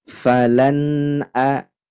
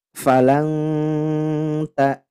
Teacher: jadi dibaca jelas tidak dengung tidakang dengungnya cukup di huruf nunnya saja tidak ke hamzahnya berbeda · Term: izhar halqi